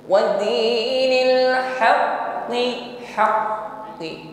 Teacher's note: Coba dirasakan di situ sejenak bunyi huruf qafnya tertahan. Ini yang pertama karena liquwatil i'timadi 'alal makhraj, karena kuatnya tekanan pada huruf qaf, haqqi. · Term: syiddah